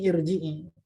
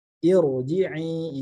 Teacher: Irji'i, ini ro-nya jadi tebal karena sebelumnya ada kasroh arid yang ada pada hamzah wasal, seperti itu. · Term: ro yang tebal